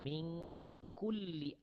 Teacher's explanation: Jadi cara dia tengah-tengah. Tahan lidah kita, ujung lidah kita supaya tidak capai kepada langit-langit. Kerana kalau kita capai langit-langit, dia akan jadi idgham.